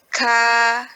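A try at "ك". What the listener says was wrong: Ya, jangan dipanjangkan. Dia suaranya tertahan. Yang keluar itu anginnya. Ya, ka. Ka, anginnya. Ya, anginnya.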